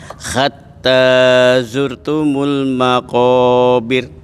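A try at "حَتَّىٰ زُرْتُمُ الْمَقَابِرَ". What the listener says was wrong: Nanti tinggal dilatih huruf H-nya Pak ya, agak dibersihin. H agak ke dalam dia.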